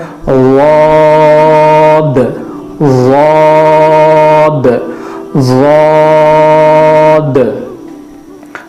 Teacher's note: ضاد کا جو تلفظ ہے وہ زبان کا اندرونی اور کنارے کا حصہ اوپر کے دانتوں کی جڑ کو لگانا ہے, تو یہ جڑ کو لگانا پھر پڑھنا پھر اس کو ادا کرنا تھوڑا سا مشکل ہوتا ہے.